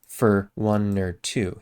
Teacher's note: that's just an r instead of an or sound